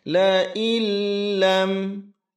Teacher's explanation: La illam itu nun sukun bertemu dengan lam tasydid, ini disebut dengan idgham syamsiyah. Maka suara huruf nun hilang melebur masuk ke dalam huruf lam dengan ditasydidkan. Jangan ditahan lama.